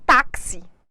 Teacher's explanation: o i aqui ele perdeu a sua força para o a